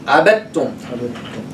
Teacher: they drop the sukun, they stress the ta. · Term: complete idgham